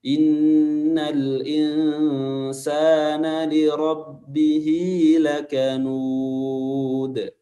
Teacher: karena dia berharakat fathah, maka huruf ra dibaca tebal